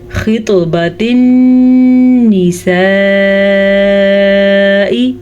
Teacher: ये है नून के ऊपर शद, तो नून की शद का गुन्ना हम अदा करेंगे।